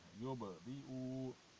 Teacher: با پہ کلکلا کرنا چاہیے، با ساکن پہ کلکلا کرنا چاہیے